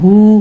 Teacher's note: ह पर उल्टा पेश है टू काउंट देते हैं